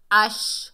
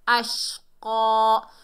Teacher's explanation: اش، حمزہ کو شین سے ملائیں گے، جب شین کو ادا کرتے ہیں تو ہماری آواز جو ہوتی ہے پھیلتی ہوئی محسوس ہوتی ہے۔